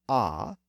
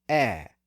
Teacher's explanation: Initially, the vowel was raised from ah up 1 step to eh, so from vowel position number 4 up to position number 3.